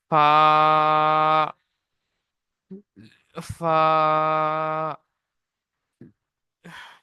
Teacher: সামনের উপরে দুই দাঁতের আগা আর নিচের ঠোঁটের ভিজে অংশের সাথে লাগিয়ে উচ্চারিত হয় ফা